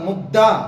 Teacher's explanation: పై పళ్ళకు ఆ యొక్క నాలుక బాగా మరి తగలడం జరుగుతుంది, అంటే టచ్ అవ్వటం జరుగుతుంది. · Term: ద్విత్వాక్షరం